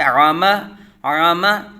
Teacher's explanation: اس کو حمزہ کی طرح آ نہیں پڑھیں گے آما نہیں پڑھیں گے بلکہ عامہ عامہ. عین کو حلق کے درمیان سے عین اور حمزہ یعنی الف میں ہم نے فرق کرنا ہے